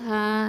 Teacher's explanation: இந்த ஹ அப்படிங்கிறது வந்து அக்கசல் ஹல்க்கு. ஓகேவா? அக்கசல் ஹல்க்கு. அப்போது இது கீழ் தொண்டையிலேருந்து வரணும்.